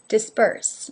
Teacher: B, B being the voiced version of P, P. Now in this word, disperse, the B, P, is almost a mix between being voiced and unvoiced